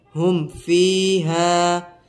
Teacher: یہاں پر بھی اظہار شفوی ہوگا، غنہ نہیں کریں گے